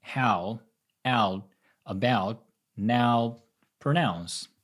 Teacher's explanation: This is pronounced as [æo], a combination of the ash sound and [o] as in more and orange.